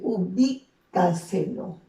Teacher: ¿Dónde lleva la mayor fuerza de voz? En la sílaba bi. Si contamos de atrás hacia adelante, esta es la posición de la aguda, de la grave, de la esdrújula.